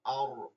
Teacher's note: আলিফ লামের পরে শামসিয়া হরফ আসার কারণে লাম উচ্চারিত হয় না